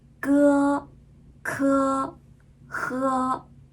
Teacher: 它是舌根发音的时候比较紧张处于一种紧张的状态